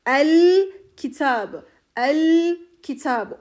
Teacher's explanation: Lam takısından sonra kameri bir harf gelmiş el Kitab el Kitab oradaki o sakin lamı belli edeceğim kıymetli arkadaşlar belli ederek okuyacağım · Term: izharı kameriye